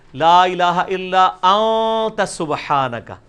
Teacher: اخفا اسے کہتے ہیں کہ خفی کر کے پڑھ رہے ہیں، نون پورا واضح نہیں کر رہے، ان نہیں پڑھ رہے، پڑھ رہے ہیں.